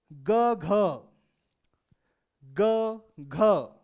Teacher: वह वर्ण जो घोष के साथ आते हैं, वह वर्ण जिनमें कंपन होता है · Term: सघोष व्यंजन